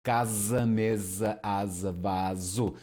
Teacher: single S in between vowels, we'll get the voiced Z